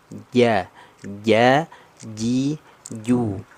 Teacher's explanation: Tanpa mengeluarkan nafas, tidak ada udara percikan nafas. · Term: jahar